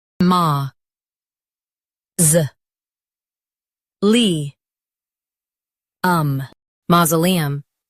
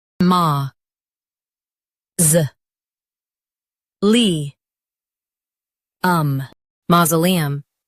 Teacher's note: stress ma and keep z soft